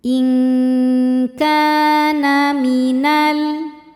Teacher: In kana ka hukumnya adalah mad thobi'i zohiri. Sebab ada alif yang sebelumnya berharakat fathah. Cara bacanya panjang dua harakat.